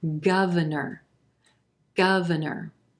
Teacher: our second syllable is gonna sound like a schwa very quick and an unstressed er sound in our third syllable